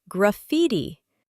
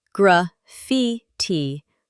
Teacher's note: The emphasis is on the second syllable.